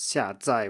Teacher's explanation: 下载 with 2 fourth tones, which is how it's listed in an authoritative dictionary